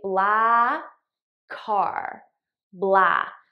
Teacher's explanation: I just eliminate one of the k sounds and I use it to link these two words together. So I say blah car, blah.